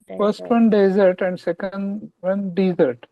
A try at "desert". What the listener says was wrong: Yes. आप उल्टा कर रहे हो. Desert. Desert. और desert.